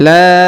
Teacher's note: huruf la dipanjangkan 5 harokat karena di atasnya terdapat tanda garis panjang 5 harokat, ya, ditandai warna hijau di sini.